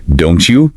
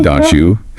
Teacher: Another one that pops up everywhere is don't you, becoming don't you. That T sound, it gets nudged by that J that follows it.